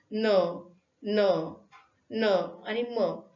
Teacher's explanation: मुखविवर बंद असताना हवा नासिका विवरातून बाहेर पडते, त्यामुळे निर्माण होणार जे काही ध्वनी आहे त्याला अनुनासिक म्हणतात.